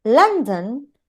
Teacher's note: lan is the strong syllable or the stressed syllable